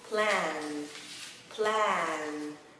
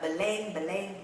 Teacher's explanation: Nó không phải là âm /e/ mà là âm /æ/ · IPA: /plæn/